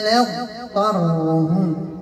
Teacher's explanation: نعطي الاستطالة للضاد هي فيها إطباق واستعلاء نب وفيها كذلك انحباس النفس فيها جهر نضطرهم ندوس مباشرة الحق